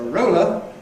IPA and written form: ˈrəʊlə (roller)